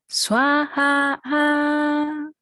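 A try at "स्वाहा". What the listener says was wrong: Good. I know you got a little bit more, but I know it's gonna come.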